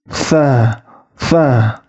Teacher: Selanjutnya itu huruf tha. Ingat cara pengucapan huruf tha itu ketika ujung lidahnya bertemu dengan ujung gigi seri atas juga